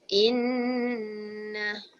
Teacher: stress the nun sound with gunnah, which is humming in the nose for 2 beats. And read out nun in one breath.